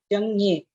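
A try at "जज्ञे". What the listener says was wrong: It's not Janye, it's Jagnye, like Jnanam.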